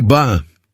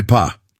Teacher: Say ba. Feel the vibration. Now say pa. No vibration, right? This awareness helps you control your sounds more accurately.